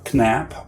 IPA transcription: knæp